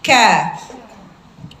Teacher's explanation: dia huruf syidah huruf yang kuat tapi dia ada percikan udara sedikit berbeda dengan k-nya kita ka ada udaranya tidak sekedar A A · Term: Kaf